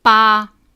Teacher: first tone, high and level.